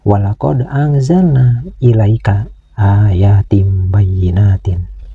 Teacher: Pada bacaan ini ada huruf dal sukun. Huruf dal sukun ini harus dibaca qalqalah yaitu qalqalah sugra artinya qalqalah kecil karena disukunkannya huruf dal ini berada di tengah bacaan. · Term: qalqalah sugro